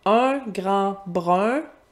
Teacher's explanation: on entend un et brun, c'est le même son